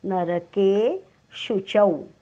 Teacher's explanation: केच्या पुढे अवग्रह आहे म्हणून के आपल्याला किंचितसा लांबवायचा आहे.